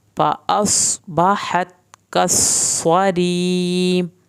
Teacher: यहाँ पर मैंने स्वाद को पुर किया, हा को हल्क से पढ़ा, ता को नहीं हिलाया